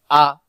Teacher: হামজা অক্ষর হলকের প্রথম থেকে শক্ত করে পড়তে হয়